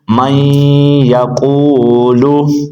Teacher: اب اس کے اندر ہم غنہ کریں گے کیونکہ نون ساکن کے بعد یا آ گیا ہے۔ من یا، قاف واو پیش قو، من یقو، لام پیش لو، من یقولو۔